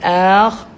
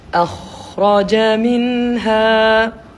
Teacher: Akak kena panjang dekat kha bukan dekat alif. Bukan ak tapi akhraja minha.